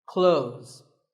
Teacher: When we say clothes, the TH in the middle can often be silent